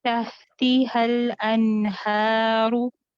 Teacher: नून को गुन्ना नाक़िस का टाइम दें, हिलाएंगे नहीं नून को